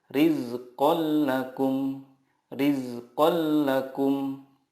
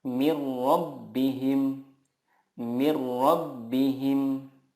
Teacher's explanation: meleburkan nun sukun ke huruf berikutnya tanpa gunnah. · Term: idgham bila gunnah